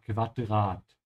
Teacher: Make sure to pronounce the U here like a soft V, ja? Quadrat.